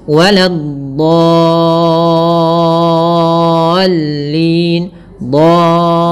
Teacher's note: Caranya adalah kita memanjangkan dotnya dulu sepanjang 6 harokat, baru masukkan ke lam, ada sedikit nabernya, waladdallin, dallin, tapi tipis lamnya, jangan dallin, ya, jangan ditebalkan lamnya. Banyak yang terjadi adalah menebalkan huruf dot, menebalkan huruf lamnya padahal dia tipis. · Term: mad lazim kalimi mutsaqqal